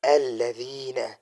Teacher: ذال کے بعد جو ہے یا ہے، یا ساکن اور اس کے پیچھے زیر ہے، اس کو یا مدہ کہا جاتا ہے، تو اس کو ہم ایک الف کی بقدر کھینچیں گے · میں نے کل بھی سبق میں پڑھایا تھا، میں نے کہا تھا کہ نرم حروف تین ہے، ثا ہے، ذال ہے، ظا ہے۔ زبان کو اٹھا کے اوپر والے دانتوں کے اوپر رکھیں گے تو اس سے ذال ادا ہو جائے گا